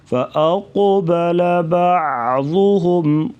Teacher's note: قاف کو پر پڑھیں گے موٹا اور قلقلہ بھی کیا جائے گا